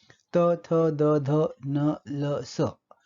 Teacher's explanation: वरचे दात हे उच्चारण स्थान आणि जिभेचं टोक हा उच्चारणावयव असताना हे ध्वनी निर्माण होतात. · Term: दंत्य ध्वनी